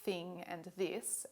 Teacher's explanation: some people say the two th sounds of english as in thing and this as interdentals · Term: interdental sounds